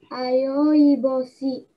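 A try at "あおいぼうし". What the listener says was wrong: Не йо, а о, а о, и.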